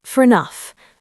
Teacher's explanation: Say it fast, fair enough. The A becomes a quick schwa.